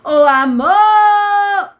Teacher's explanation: a palavra amor, você vai reparar que há mais intensidade na sílaba mor. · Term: sílaba tônica